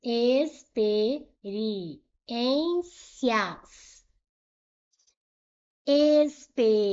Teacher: Última, penúltima foi a mais forte. Experiências é uma palavra paroxítona.